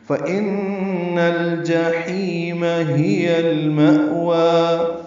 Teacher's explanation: ما حمزہ ساکن جھٹکے سے ادا ہوگا ، وا کھڑا زبر ہے، 2 حرکات لمبا کریں گے، وقفاً